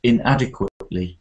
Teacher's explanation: I think the stress is on the second, inadequately.